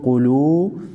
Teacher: क़ाफ फेश को, लाम वाव फेशलू क़ुलू, क़ाफ को मोटा पढ़ेंगे और वाव मद्दा को एक अलिफ के मकदार खींचेंगे।